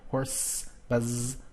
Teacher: Some words end in a sibilant sound already, like the word horse. You can hear the sibilant sound, which is the hissing sound